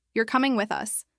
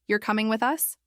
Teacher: The first one ends with a fall. It's a statement. The second one rises at the end. It's a question. The words are exactly the same, but the meaning changes completely because of the intonation.